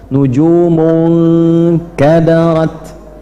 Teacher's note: Dari gunah itu ng langsung masuk ke tempat huruf setelahnya. · nah nunnya langsung masuk ke huruf kaf, ke tempatnya makhrajnya kaf. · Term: ikhfa